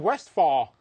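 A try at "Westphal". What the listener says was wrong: I think you have to pronounce the "p" in the middle.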